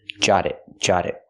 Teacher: We hear the T in jot change to a fast D because now it's between vowels.